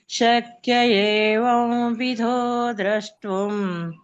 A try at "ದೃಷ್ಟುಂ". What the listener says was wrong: ಇಲ್ಲಿ ದ್ರ ಎರಡು ಸೇಮ್ ತಗೊಂಡ್ರಿ ಮಾತಜಿ